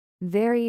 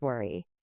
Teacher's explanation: Feel your teeth touch your lip for very and your lips form a circle for worry.